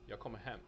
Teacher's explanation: the two former words are unstressed and thus blend together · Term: sentence prosody